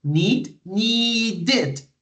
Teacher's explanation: Need, when you have that verb, it ends in the D sound. So the ED, it's pronounced with an extra syllable.